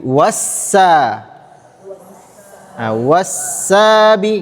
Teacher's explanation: sifat huruf sin adalah rokhawah. Rokhawah yang artinya suaranya panjang.